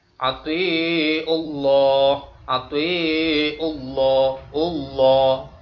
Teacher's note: Jadi kalau ada huruf jalalah dan sebelumnya itu ada huruf yang berharokat domah, maka dibacanya tafhim. Lafaz Allah tafhim, bacanya tebal.